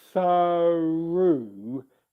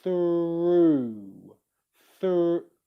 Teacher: my lips come out as my tongue goes back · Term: r sound